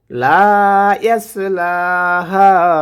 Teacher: এখানে হা তিন আলিফ টেনে পড়তে হবে